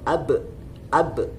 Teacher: Nah, dari mana makhrajnya huruf ba? Maka makhrajnya ba adalah keluar dari bibir dengan terkatup ba, seperti itu.